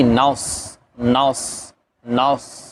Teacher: صاد کے اندر سیٹی کی آواز آئے گی، اور اس کو ادا کرنا ہے آپ نے دانتوں کو ملا کے ، اوپر والے اور نیچے والے دانتوں کو جب آپس میں